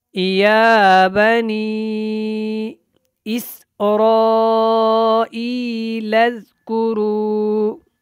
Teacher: یا بنی کے اوپر مد کرنی ہے، اسراء کے اوپر بھی مد کرنا ہے، ای کو لمبا کر کے پڑھنا ہے اور لام کو زال کے ساتھ ملانا ہے